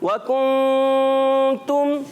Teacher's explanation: नून को छुपा कर अदा करते हैं, नून को जाहिर नहीं करते और छुपा कर गुन्ना अदा करते हैं